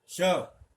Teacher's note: इसका उच्चारण स्थान तालु है, इसलिए तो तालव्य श कहते हैं